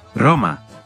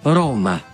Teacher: la R inicial en las palabras es suave en italiano y fuerte en español